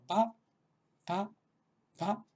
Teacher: Esto no, probablemente no, si no tenemos familiaridad con las lenguas indias, pues será la primera consonante sonora aspirada, o sea, la primera consonante que tiene una vibración de las cuerdas vocales que además es aspirada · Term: B aspirada